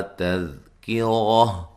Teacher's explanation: تذکرہ تا کو باریک پڑھیں گے، دال کو ہلا کے نہیں پڑھنا ، کاف کو باریک پڑھیں گے اور را کو موٹا ادا